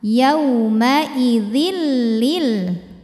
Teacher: Idgham bilaghunah yang Kamil karena masuk dari tanwin ke lam sempurna artinya sifat huruf pertama yang tanwin sama sekali sudah tidak terlihat · hukum idgham bila ghunah karena ada tanwin kasrah menghadapi huruf lam cara membacanya tanwin dimasukkan atau dileburkan ke lam tidak disertai dengungan